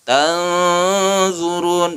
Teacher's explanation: Nun mati bertemu dha, ini juga ikhfa. Ikhfa itu samar, membacanya didengungkan juga, ditahan, panjangnya 2 harokat.